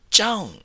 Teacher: with a high tone as if you are calling somebody out